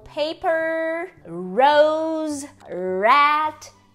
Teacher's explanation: a gente tem o nosso R retroflexo, que é o R do interior